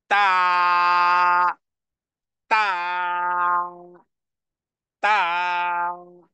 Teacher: তাহলে তায়ের উচ্চারণ আবারও: সামনের জিহ্বার আগা, হ্যাঁ, জিহ্বার আগা সামনের উপরের দুই দাঁতের গোড়ার সাথে লাগিয়ে আওয়াজকে আওয়াজকে কঠিন করে টেনে বলতে হবে